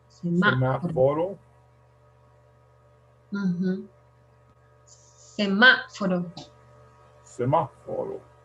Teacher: The accent is on the second syllable, MA.